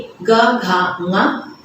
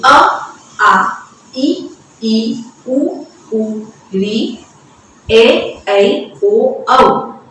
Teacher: ये सारे ही सघोष के अंतर्गत आते हैं, जिनको हम एक झनकार के साथ, एक नाद के साथ उच्चारित करते हैं।